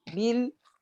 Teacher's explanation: بيل مجرد التصاق عضوي النطق والإتيان بقليل من الجهر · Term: اللام الساكنة